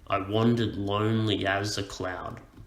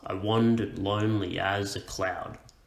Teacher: the first syllable is unstressed followed by stressed and so on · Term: bouncing rhythm